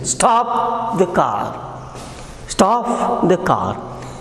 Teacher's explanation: Falling tone will be here because it is command, it is ordered.